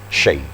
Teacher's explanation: Shin ini sangat menyembur suaranya